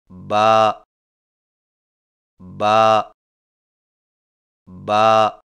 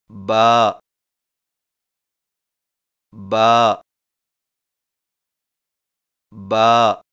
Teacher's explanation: با کی ادائیگی میں ہونٹوں کے گیلے حصے کو سختی سے ملا کر باریک آواز میں پڑھیں